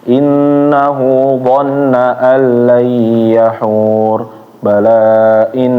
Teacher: huruf-huruf nun yang bertasydid itu ditahannya harus stabil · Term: nun bertasydid